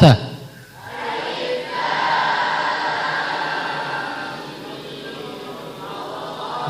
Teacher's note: baca mimnya dua harakat. Fathahkan sambung dengan lafzul jalalah.